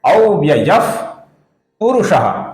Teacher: तो संस्कृत के नियमों के अनुसार जब विसर्ग के आगे प अक्षर आता है तो विसर्ग का उच्चारण फ इस प्रकार होता है। बहुत ही हल्का सा फ रहता है, जो बहुत ही कम सुनाई देगा।